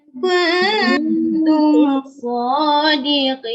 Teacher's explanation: Nun tak ada apa atas tak ada baris. In kuntum dengung dua kali nah. In dan kun.